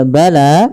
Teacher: panjangkan huruf lanya sepanjang dua harakat. Karena la di sini ada alif kecil yang datang setelahnya dan ia berada di atas huruf ya. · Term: mad thabi'i, mad tabi'i